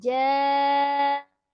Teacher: Ma kembali 2 harakat dibaca, ada alif sebelumnya fathah. Ja'at, panjang ya, 4 sampai 5 harokat. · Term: mad wajib muttasil